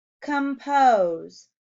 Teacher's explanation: it doesn't say its name, the long O sound, until the second syllable.